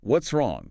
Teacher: The S sound at the end of what's blends instantly into the R of wrong.